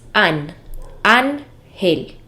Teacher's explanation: la palabra ángel es una palabra grave porque tiene el acento en la penúltima sílaba que es an, ángel.